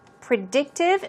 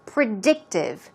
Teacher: stress goes on the second syllable